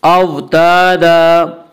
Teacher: अलिफ मद्दा को एक अलिफ के बराबर खींच कर पढ़ते हैं।